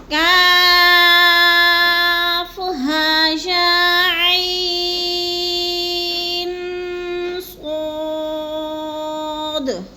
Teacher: اب عین جو ہے اس کو حلق سے نکالنا ہے، عین جب ادا کرنا ہے، آخر میں نون میں آواز کو ناک میں لے جانا ہے، تھوڑا سا غنہ کرنا ہے۔